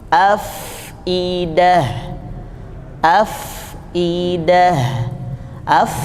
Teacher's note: af ada hembusan nafasnya, baru kemudian idah · Tidak mempercepat bacaan huruf fa sukunnya, jadi biarkan nafasnya dihembuskan yang banyak dulu, itu namanya sifat hamz